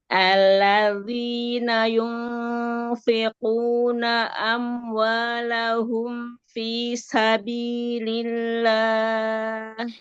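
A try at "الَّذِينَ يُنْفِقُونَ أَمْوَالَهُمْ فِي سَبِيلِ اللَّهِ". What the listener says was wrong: Ya, zal jangan dibanting. Ujung aja. Alladzi, jangan digerakkan ujung lidahnya aja di makhraj huruf zalnya. Ya, jadi alladzi, digesek sedikit. Udah ujungnya aja yang digerakkan ya.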